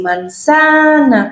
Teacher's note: el acento no va donde tiene que ir manzana porque es una palabra grave